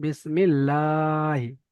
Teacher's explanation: আল্লাহ শব্দে লাম তাসদিদের আগে জের এসেছে, তাই আল্লাহর লামকে বারিক অর্থাৎ লা পড়তে হবে। লামের উপর খাড়া যাওয়ার আছে, খাড়া যাওয়াটি আলিফ মাদ্দা সমতুল্য একা কালি পরিমাণ টান দিয়ে পড়তে হবে। হায়ের নিচে জের আছে, যেটি হলো হারাকাত, হারাকাতে পড়াকে তাড়াতাড়ি পড়তে হবে, টান দেওয়া নিষেধ।